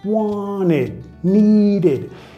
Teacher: Igual vamos a vincular con la R suave, pero tenemos que meter ese sonido E, E, que no existe en español